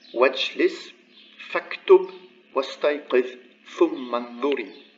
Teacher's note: But the second line, you would find it's preceded by something else, a particle or another word. So then the vowel of liaison disappears and it's turned into a wasla